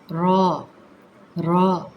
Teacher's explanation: ر کی آواز، یہ اسکوٹر کی بائک کی آواز نہیں لے کر آنی، نرمی رکھنی ہے، زبان کو رگڑنا نہیں ہے۔ البتہ زبان کی جو ہماری پشت ہے وہ کناروں کے اوپر والے جو بسوڑے ہیں اس طرف آپ رکھیں، بالکل اسی طریقے سے آپ محسوس کریں گے جیسے اس کی شیپ بنی ہوئی ہے، اسی طریقے سے آپ را کو ادا کریں گے تو بہترین عطا ہوگا۔